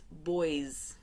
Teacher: So when you add the s, the s is actually going to be pronounced like a z. So it's boys, okay?